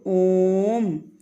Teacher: इसको बोलने में 3 गुना समय लगता है। जैसे इसमें हमने 1 लगाया, दीर्घ में दुगुना लगाया, और प्लुत में इससे भी ज़्यादा, तो तिगुना हो गया। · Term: प्लुत स्वर